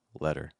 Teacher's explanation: What happens to that t sound is it completely changes. It no longer becomes a t but makes something that's almost like a d sound. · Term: flap T